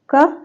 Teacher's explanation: क का हो जाएगा हमारा अघोष अल्पप्राण। अघोष अल्पप्राण और ख का हो जाएगा अघोष महाप्राण।